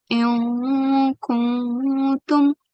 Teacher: But it's not one of those 7 letters, okay, and it's not a mushaddad letter either. So in this case, we have to do ikhfa, conceal the sound, okay? And there's a light nasal sound as well.